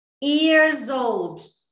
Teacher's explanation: eu vou botar um som de Z para juntar com old ali, years old, tá?